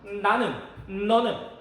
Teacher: 치조 쪽에 혀가 붙었다 떼지면서 나지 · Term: 니은